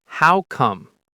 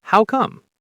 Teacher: in natural speech, the two words connect. It sounds like one word.